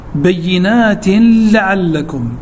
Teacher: تنوين وبعده حرف اللام، واللام من حروف الإدغام بغير غنة